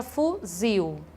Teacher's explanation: a palavra fuzil também oxítona a sílaba tônica dela é a última